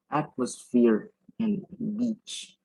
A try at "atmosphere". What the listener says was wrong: Atmosphere. We actually you said in your speeches atmos or maybe anything else, but actually atmosphere. Atmosphere.